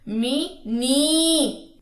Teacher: میم کی زیر لمبی نہیں کرنی، نون کی زیر لمبی کرنی ہے